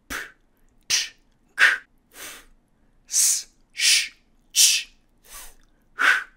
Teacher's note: 이런 말들은 발음할 때 목청이 울리지 않기 때문에 무성 자음이 되겠습니다